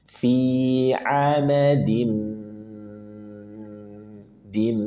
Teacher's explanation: pastikan ada ghunah atau dengung. · tanwin bertemu dengan mim. Maka idgham bi gunnah. Maka pastikan ada gunnah atau dengung.